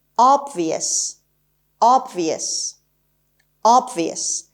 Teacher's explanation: The stress is on the first syllable, obvious, and it's definitely an adjective.